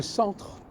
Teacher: les Anglais disent center. Hmm, Quand je dis centre, ouais, je relie le T et le R.